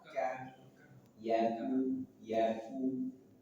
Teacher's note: huruf kaf, pangkal lidah, tapi lebih ke depan dari makhraj huruf qaf. Ka, yaku, tipiskan.